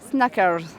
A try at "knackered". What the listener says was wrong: C'est pas mal, mais il n'y a pas de S. Yeah, knackered. Knackered.